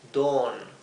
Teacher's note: Dawn, lo he escrito aquí en verde con doble O, porque la A y la U, dawn, se pronuncia como una O larga